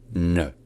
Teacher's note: c'est comme un N, mais avec la pointe de la langue qui est vers le haut et qui est retournée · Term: N qui est rétroflexe